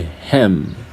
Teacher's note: my lips are closed when I pronounced the last sound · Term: bilabial sound